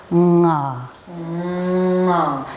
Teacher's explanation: Now we're going to incorporate vibration and the sound of the N-G combination, nga. So again, allowing the back of the tongue to make contact with the soft palate and then releasing it in that ah sound